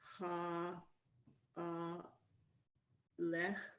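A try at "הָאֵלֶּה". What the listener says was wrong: Vowel under the aleph. Hey, that's not a chet, it's a hey, it's silent.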